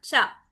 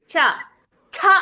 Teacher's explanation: చెయ్యి ఉంది చూసావా ఇక్కడ నీ నోటి దగ్గర పెట్టుకొని చూడు నీకే అర్థమైది ఛ ఛ అనంగానే ఎక్కువ గాలి వస్తుంది